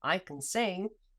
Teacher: the vowel sound in can is dropped into a schwa